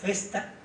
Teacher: las consonantes Pues confluyen en una especie de soplo respiratorio c no pronunciamos una s cesta sino un soplo espiratorio